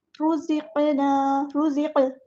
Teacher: را کو پورا ادا کرنا ہے، ہیوی لیٹر ہے، زا باریک اور اس میں سیٹی آئے گی. قاف ہیوی لیٹر ہے، پورا ادا کرنا ہے، تو قاف کو یہاں پر ہم ہلائیں گے، قاف پر کلکلا ہو رہا ہے.